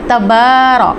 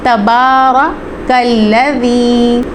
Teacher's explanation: تبارک الذی، اب یہاں پہ با کے اوپر کھڑا زبر ہے، اس کو ہم تبارہ نہیں پڑھ سکتے، ٹھیک ہے؟ تبارہ، را کے اوپر زبر ہے، اس کو پر پڑھا جائے گا